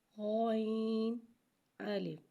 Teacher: غین کو ایک الف یعنی 3 مقدار کھینچ کے پڑھیں گے۔ غین حرف مستعلیہ ہے، اسے موٹا پڑھیں گے، جبکہ الف کو بغیر کھینچے پڑھیں گے۔ غین الف۔ الف کو موٹا نہیں پڑھیں گے۔